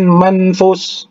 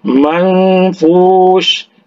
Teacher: ini diikhfakan, jadi dia samar-samar, jadi dia dengungkan